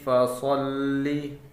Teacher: فا زبر فا، صاد لام زبر صل، لام زیر لی، فصلی۔ لام کو سختی کے ساتھ صاد کے ساتھ ملا کر پڑھیں گے